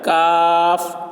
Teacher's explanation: کاف کا مخرج ہے زبان کی جڑ اوپر کا تالو منہ کی جانب ذرا نیچے ہٹ کر، تو اس سے کاف ادا ہوتا ہے، یعنی کاف، اس کی آواز باریک ہو جاتی ہے۔